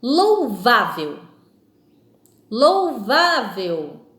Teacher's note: Então percebemos aí que a sílaba forte, que é a sílaba tônica, apresenta então na palavra vá